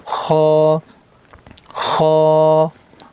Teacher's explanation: खा इसको हलक से अदा करेंगे और मोटा करेंगे